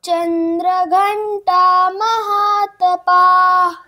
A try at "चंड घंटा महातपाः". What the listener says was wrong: ये चंद्र नहीं है, आप लोग भी ध्यान रखिएगा। चंड घंटा महातपाः।